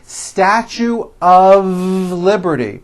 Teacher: notice how I connected the word of with the word Liberty